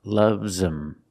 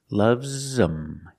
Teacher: The H in him is silent, so you link the words.